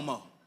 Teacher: the English word that holds an O R combination the R sound becomes silent